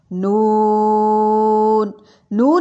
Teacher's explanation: نون میں زبان کا کنارہ جب ثنایا، رباعی اور انیاب کے مسوڑوں سے لگے تو نون ادا ہوتا ہے۔